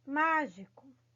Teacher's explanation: Mágico, queridos, é uma palavra que tem o acento no má. Por ter esse acento, ele já é uma sílaba forte